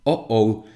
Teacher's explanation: That thing in between the vowels is a consonant, and it is known as the glottal stop because it's like a plosive, right?